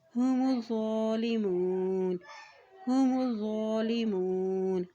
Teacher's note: میم کے پیش کو ذو کے ساتھ ملائیں گے کیونکہ ذو کے اوپر شد ہے، ٹھیک ہے. اور ذو کے اوپر کھڑی زبر بھی ہے، اس لیے اس کو ایک حرکت لمبا بھی ادا کریں گے.